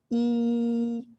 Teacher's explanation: the E vowel, where the tongue is bunched up towards the front of the palate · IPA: /i/